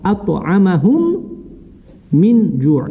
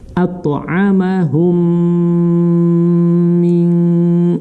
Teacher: Грубо говоря, встретились две буквы мим. Их надо читать слитно, нераздельно. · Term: идгам мислаин